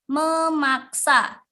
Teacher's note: Terdapat pelepasan fonem P diluluhkan dengan nasal M.